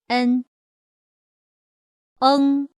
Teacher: the 嗯 is slightly enhanced with the nasal sound.